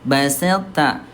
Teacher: sempurnakan huruf to nya dulu ya, sempurnakan sifat tebalnya to baru ke ta ya. Jadi baselta bukan basatta tapi baselta. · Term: idgham mutajanisain